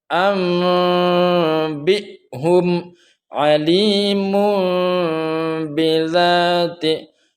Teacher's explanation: Itu cara baca bacaan iqlab yang benar, bibir terbuka sedikit, artinya tidak terlalu rapat